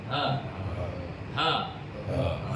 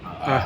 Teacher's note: Jadi Hamzah dengan ha pada bahagian kerongkong yang paling bawah. Bawah kerongkong.